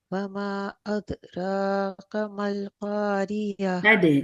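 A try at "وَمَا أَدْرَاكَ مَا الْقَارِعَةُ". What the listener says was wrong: اس کو تھوڑا سا اور اچھا کر لیں، ادراکا، اد ہے نا، اس میں اد میں ہو یہ رہا ہے کہ آپ نے کلکلا اچھے سے سننے سے پہلے جیسے ہی آپ کے مخرج مل رہے ہیں وہاں پہ آپ آواز روک دے رہے ہیں، آواز کو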